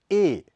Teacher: इसके उच्चारण में होठ दोनों किनारों की तरफ ई से ज्यादा खुलते हैं